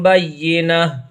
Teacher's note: اس گول تا کو ہا سے بدل کر کے پڑھتے ہیں، تو یہ تا نہیں پڑھا جائے گا بلکہ اس کو ہا پڑھیں گے